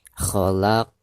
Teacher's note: Maka ketika kita mewakofkan, huruf qafnya itu harus dipantulkan dengan suara pantulan yang tebal karena dihukumi qalqalah kubro.